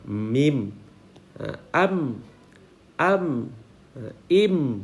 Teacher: Li khurujil mimi minas syafatain. Dinamakan syafawiyan li khurujil kerana keluarnya mim daripada dua bibir